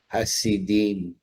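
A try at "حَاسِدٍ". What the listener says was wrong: So pronounce the alif. Hasidin.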